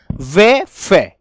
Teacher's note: व फे दंत प्लस ओष्ठ दोनों के मेल से बोली जाती है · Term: दंतोष्ठ ध्वनि